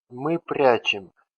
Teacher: in these four endings we have vowel letter ye, which stands for unstressed sound e in normal pronunciation